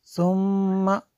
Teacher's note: ثم میم شدد ہے یہاں پہ غنہ کریں گے